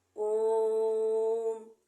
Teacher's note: जिन स्वरों के उच्चारण में ह्रस्व स्वर से 3 गुना समय अधिक लगता है उन्हें प्लुत स्वर कहते हैं।